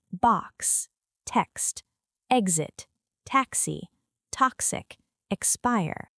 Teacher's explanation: This sound combines /k/ and /s/. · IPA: /ks/